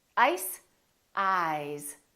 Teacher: This S is actually pronounced as a Z sound. This is actually Z, Z.